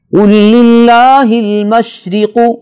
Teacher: را کے نیچے زیر ہے، ہم اس را کو باریک پڑھیں گے۔